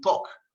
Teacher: We don't really pronounce the L.